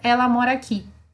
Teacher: uma vogal entrando por dentro da outra sendo absorvida por outra e quando você vai ver parece que tá falando uma palavra só essa palavra não existe em português · esses dois A's acabam se tornando uma coisa só, como se eu estivesse falando ela mora aqui